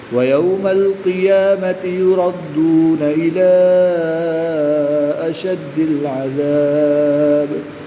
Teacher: یہاں پر مد منفصل ہوگی 2-2.5 تک کھینچ کر پڑھیں گے